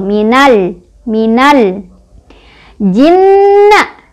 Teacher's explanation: Cara bacanya adalah alif lamnya dibaca dengan jelas, ya, tidak boleh mantul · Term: alif lam koma riyah